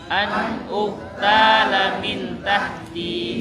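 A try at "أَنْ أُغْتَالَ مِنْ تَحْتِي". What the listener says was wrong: Jangan mati ka di situ tapi ghain. An jangan an tapi go. Coba an ya, kayak meneguk air gitu. An ugtala min tahti.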